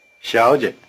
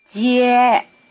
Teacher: In this word, both syllables begin with the tongue in the forward position, the so-called palatal position.